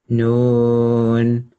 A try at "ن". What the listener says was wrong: Yep, little bit longer. That was still maybe 2 to 3 seconds max. So a bit more time on the noon.